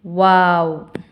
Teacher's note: இரு உதடுகளை குவித்து வைப்பதால் ஒளிக்க பெறுகிறது